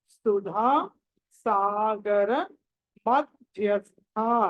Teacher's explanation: మధ్య ధ్య అన్నది ధ అన్నది మహాప్రాణం ఒత్తి పలకాలి